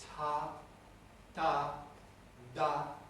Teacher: Ta, aspirated, da, unaspirated but voiceless, da, voiced.